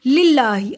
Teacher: اللہ کے نام کو باریک پڑا. اللہ کے نام سے پہلے زیر ہے.